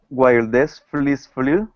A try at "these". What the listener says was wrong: These fleas. Make sure it's these. Once again, you want to make the E a little longer. A fun fact is that E sound in English almost always is held longer than other vowel sounds.